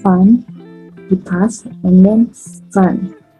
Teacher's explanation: labiodental itu touching the lower lips to the upper teeth